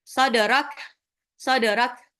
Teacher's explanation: kafnya itu tidak ada sifat pantul, tapi dia ada sifat syiddah, tertahannya suara keluar hembusan udara waktu mengucapkannya